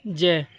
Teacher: जो ज व्यंजन है यह ज यह आपका तालु से बोला जाता है